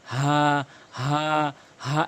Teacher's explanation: হাটি হলো ছোট হা, এটি হলকের শুরু থেকে উচ্চারণ হয়